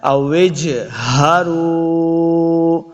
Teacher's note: یہ جو ہا ہے اس کو سینہ کی طرف یعنی حلق کے نچلے والے حصے کی طرف سے ادا کرنا ہے